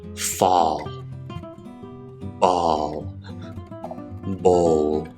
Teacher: A dark L, my tongue goes to that position, but I don't flick it